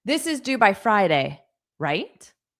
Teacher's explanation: I'm using the word right with a rising intonation to suggest that I want your confirmation.